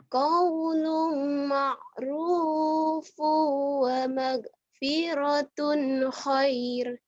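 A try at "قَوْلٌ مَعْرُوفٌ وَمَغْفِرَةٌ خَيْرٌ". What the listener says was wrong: khair jadi panjang ya, jadi madlin kan. Huruf lin ketemu satu huruf hidup dihentikan.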